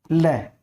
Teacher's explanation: जीवा क्या है ऊपर की उठेगी, उठकर आवाज जो है इस जीवा के अगल बगल से, अगल बगल या इसके आस पास से आसपास से निकलती है, इसीलिए इसे क्या कहते हैं, पार्श्विक व्यंजन कहते हैं।